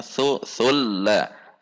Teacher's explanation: Lam tasydid harus bainiyah, tidak boleh ditahan.